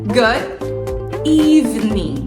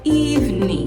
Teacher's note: o g no final não é pronunciado